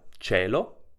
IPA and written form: t͡ʃelo (CIElo)